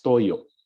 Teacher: there's a glottal stop here on the last syllable